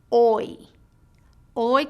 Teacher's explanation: your tongue Glides from a low position to a high position near the roof of your mouth let's try it o oi can occur at the beginning the · Your lips glide from a tense oval-shaped position to a more relaxed, slightly parted position, oi. Your jaw rises with the tongue and returns to a neutral position. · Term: dip thong, diphthong, third diphthong